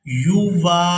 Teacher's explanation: کھینچ کر ادا کریں گے کیونکہ یہ الف مدہ ہے